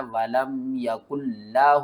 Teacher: اس نون کو آپ نے چھوڑ دینا ہے، کاف کو اس لام کے ساتھ ملا کر پڑھنا ہے